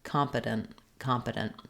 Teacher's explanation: I don't hold the N for a long time. So I have to kind of stop for the T and make a really short N